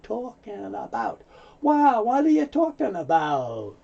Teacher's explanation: sometimes the G is not made so the N moves over to the a